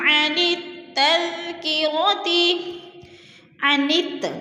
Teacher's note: الف اور لام کے اوپر کوئی حرکت نہیں ہے، زبر زیر پیش، تو الف اور لام کو نہیں پڑھنے بلکہ نون اور تا کو جوڑ کر پڑھنا ہے